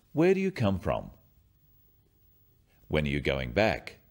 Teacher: Questions starting with where, when, what, why or who are asking for information, and they often have a falling tone.